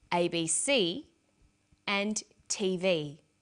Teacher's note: each letter in the abbreviation is pronounced separately but the last letter is pronounced more strongly because it carries the primary stress